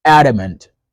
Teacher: We stress the first syllable A. However, the second A and the third A get reduced. They become E.